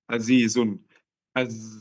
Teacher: Di zai suara peluit ini mirip suara lebah. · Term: sifat as-safir